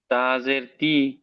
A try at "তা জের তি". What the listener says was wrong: তাটি টান দেন, একালিফ টান হরুফ।